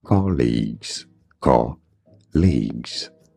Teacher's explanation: stress on the first syllable British and American pronunciation are similar